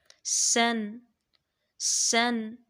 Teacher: ان حروف کو ادا کرتے وقت آواز تیز مثل سٹی کے نکلتی ہے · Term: صفیر